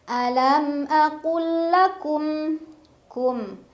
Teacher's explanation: ada izhar syafawi karena ada mim sukun bertemu dengan huruf lam dibaca mim sukunnya jelas masih bunyi am